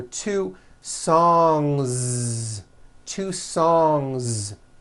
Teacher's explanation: Song ends with a voiced NG sound. So if you make it plural, don't forget to add a voiced Z ending.